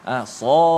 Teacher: 6 harakat. Sad, dan pastikan di hujung tu kita kena sebut huruf dal yang qalqalah